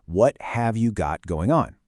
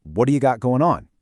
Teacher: It becomes, "What do you got going on?" That T in got becomes a D. We drop the G at the end of going. It's messy, it's fast, and it is absolutely how people really talk.